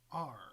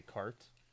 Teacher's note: The South African R is rhotic. So you pronounce the R like we do.